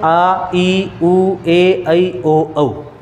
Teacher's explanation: इनका जब अपन उच्चारण करते हैं तो ह्रस्व स्वर से दुगना समय लगता है इनके उच्चारण में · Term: दीर्घ स्वर